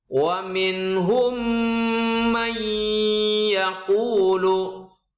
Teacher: contoh mim sukun bertemu dengan mim dibaca dengung yang lama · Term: idghom misli